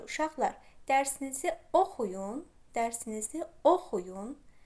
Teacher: Vurğunu ilk hecanın üzərinə qoyuram. Bununla da fonetik normanı, yəni arepik qaydanı və fonetik normanı pozmuş oluram.